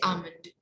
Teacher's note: the l is silent should be not pronounced